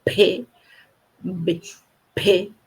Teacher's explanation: P B P, um mais explosivo, o outro mais contido. A gente consegue perceber essa diferença.